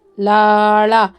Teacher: ಈ ಳಗೆ ನಾಲಗೆಯನ್ನು ಫೋಲ್ಡ್ ಮಾಡಬೇಕಾಗುತ್ತೆ